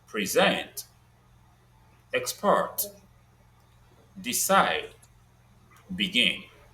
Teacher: Then the stress on the last syllable comes with most two syllabic verbs like present, export, decide, begin.